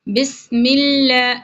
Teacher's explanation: لام یہاں پر باریک پڑھا جائے گا